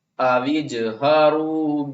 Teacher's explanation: واو کو جیم سے ملائیں گے، سب سے نیچے درجے والا قلقلہ کریں گے